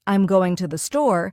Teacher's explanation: the stress naturally falls on going and store. The smaller words like I'm and to the R less emphasized and spoken quickly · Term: stress pattern